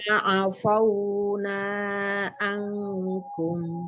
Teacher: Fa-nya dibuka mulutnya biar tidak tebal terdengar ya.